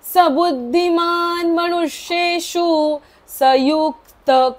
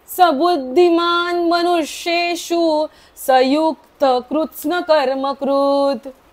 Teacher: इथे युक्तच्या नंतरचा जो विसर्ग आहे तो पण अर्धाच बोलायचा आहे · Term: अर्धा हाफ विसर्ग